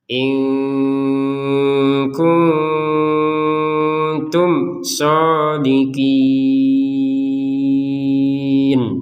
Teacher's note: in itu dibaca dengan jelas, tapi karena itu belum digabungkan kepada huruf berikutnya. Karena huruf berikutnya adalah huruf kaf, maka yang awalnya bacanya dengan jelas, kita baca dengan samar.